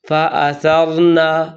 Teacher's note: ایک تو یہ کہ سا کو سین پڑھتے ہیں، فأثرنا، جو کہ بالکل غلط ہے، یہ سا ہے، زبان کی نوک سامنے والے 2 دانتوں کے کنارے پر لگا کر ادا کریں گے تو سا ادا ہوگا، فأثرنا۔ اور دوسری غلطی یہ ہے کہ یہاں بعض لوگ نون کو لمبا کر دیتے ہیں، یعنی فأثرنا به فأثرنا به۔